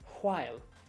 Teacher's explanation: What you want to do, though, for the W-H-I-L-E word, you want to get that H sound to come first.